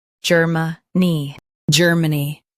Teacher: Emphasize ger and soften money.